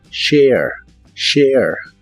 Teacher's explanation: lleva un sonido de e antes de la a pero la letra e del final no se pronuncia share share